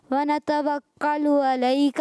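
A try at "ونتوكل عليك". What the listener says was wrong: ونتوکل کاف باریک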